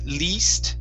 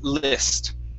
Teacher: Okay, so this word, instead of saying least, it's list, short I, list. Okay, list.